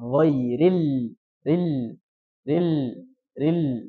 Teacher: sedikit saja ya jadi mengalir sedikit suara pada makhrajnya huruf lam makhrajnya di samping lidah tapi yang bukan sini ya sini ujung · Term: bainiah